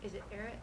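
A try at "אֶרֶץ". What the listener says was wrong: Yep, eretz. Good job. Yep, and you got the emphasis right too.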